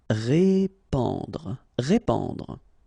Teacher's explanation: here you get this AN combination, so the sound is en.